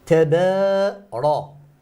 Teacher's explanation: Then the Ra, mufakhama, because it has fatha.